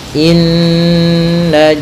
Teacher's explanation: cara membacanya adalah kita menahan suara nunnya ya terlebih dahulu sepanjang 2 harakat lebih sedikit ya, kemudian baru kita baca janya. Inna nah tidak boleh atau jangan dilangsungkan gitu ya, jangan inna jahannam, nanti kurang sempurna dalam menahan gunnahnya.